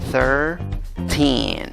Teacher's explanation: La primera sílaba no tiene el sonido de una I, aunque se escribe con I, se pronuncia con schwa